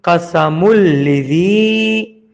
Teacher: یہ جزم والا نون آگے لام میں ادغام بلا غنہ ہوا ہے ، قسم، لام زی لی، زال یا زیزی، لذی، قسم لذی،